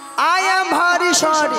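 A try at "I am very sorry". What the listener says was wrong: আই এম ভারি নয় মাসি বলো আই এম ভেরি সরি হ্যাঁ সরিটা ঠিক হয়েছে কিন্তু ভারী ভেরির বদলে ভারী হয়ে গেছে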